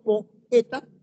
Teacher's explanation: por ejemplo po e ta ya cuando yo digo poeta allí hay un yato no hay un diptongo porque las dos vocales se pronuncian separadas